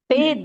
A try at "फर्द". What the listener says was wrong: फ- नहीं नहीं, फ र द, फरद फरद। हाँ, र आएगा ना, फ र द, फरद। फर्द दोनों होते हैं।